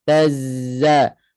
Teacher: Masuk zai kuat. Suara mengalir dan kuat.